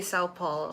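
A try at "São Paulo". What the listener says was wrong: It's not Sao, it's Sung. But it's hard to say properly because I just say ng on it like sung, but it's more like song. It's in the nose.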